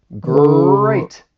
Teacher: your tongue is going to be pulled back a little bit and the sides of your tongue are going to be touching the insides of your upper teeth. The tip of your tongue is it's going to be pointed up and it's really going to be fixed in a fixed position. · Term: American R